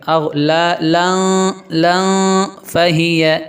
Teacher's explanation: تنوین کے بعد حروف اخفا میں سے فا آ گیا تو یہاں پہ آواز کو ناک میں چھپا کے پڑھیں گے